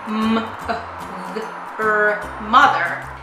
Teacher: both the O and the e make the schwa sound